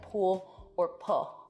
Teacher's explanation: vocalization so that's an L turning into a vowel